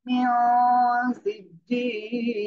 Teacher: নুন সাকিন এরপরে ইকফার অক্ষর সিন আসছে, এই জন্য আমরা কি করব, নাকের ভিতরে নিয়ে গুন্না করব